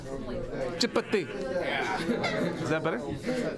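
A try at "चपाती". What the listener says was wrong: You have to emphasize the P and the T.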